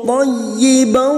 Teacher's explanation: masuk pada huruf ya yang bertasdid, hanya masuk tanpa ditahan lama-lama, tanpa mendengung.